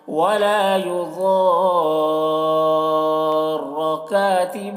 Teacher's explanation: ضاد کو پر پڑھیں گے، ضاد حرف مستعلیہ میں سے ہے